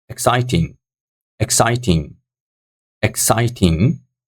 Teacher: So second syllable is stronger than the other syllables. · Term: stress